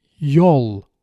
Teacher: And with back vowels, we use the dark L.